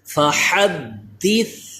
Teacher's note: ثا پہ سیٹی پیدا نہیں ہوتی، ثا کے مخرج پہ ثا کو زبان کو اوپر والے دانتوں سے چپکا کے پڑھتے ہیں